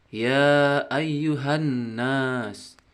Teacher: Di situ ada huruf yang berwarna merah yang menunjukkan bacaan gunnah, yaitu berdengung selama 2 harakat